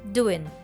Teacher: Doing loses its nasal sound at the end, so it's just the N sound that we hear.